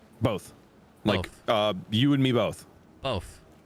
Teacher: You say both with an F?